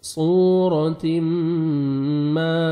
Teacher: صورتم, تنوین کے بعد حروف یرملون میں سے میم آ رہا ہے, یہاں پہ ادغام کریں گے, نوز میں ساؤنڈ لے کے جائیں گے, غنہ کے ساتھ ادغام کریں گے. صورتم ما, الف مد ہے, 1 سیکنڈ میم کو کھینچنا ہے.